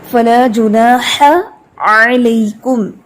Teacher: ح اور عین دونوں ایک ہی مخرج سے ادا ہوتے ہیں نا، ح کا جو ہمس ہے وہ واضح رکھنا ہے